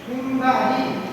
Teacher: Nah, itu ada nun sukun bertemu dengan ba, maka nun sukunnya berubah menjadi mim.